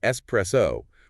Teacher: It's simply espresso with the stress on the second syllable. The mistake likely comes from conflation with words like express or extrude, but espresso is Italian in origin, meaning pressed out, and that X sound is entirely foreign to its root.